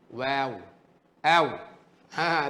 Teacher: Dua bibir mulut muncung ke depan, terbuka, keluar daripadanya huruf waw.